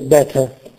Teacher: si riduce a una vocale indistinta a uno shva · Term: schwa